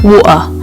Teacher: there's a tension in your throat that just cuts off the sound. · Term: glottle stop